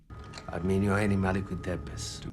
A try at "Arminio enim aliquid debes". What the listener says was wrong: So with Arminio enim aliquid debes, there are two things that stand out to me in particular. One is emphasis. Enim is emphasized by quite a few of the actors when they're speaking. Enim, though, should not be emphasized. It's Arminio enim. It's basically something like an enclitic.